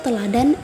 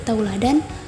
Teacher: perubahan bunyi vokal tunggal menjadi dua bunyi vokal atau vokal rangkap secara berurutan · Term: diftongisasi